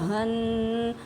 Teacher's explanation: ہ یہ دیکھیں یہ حروف حلقی میں سے ہے، انتہائی حلق سے یہ ادا ہوگا